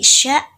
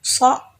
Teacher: dia si sya itu hambatannya ada di daun lidah. Sedangkan si so ini hambatannya ada di ujung lidah. Nah, perbedaannya juga di kalau misalkan si huruf sya atau bunyi sya ini dia di langit-langit keras.